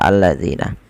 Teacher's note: alif lam syamsiyah yang mana lamnya diidgamkan kepada huruf lam setelahnya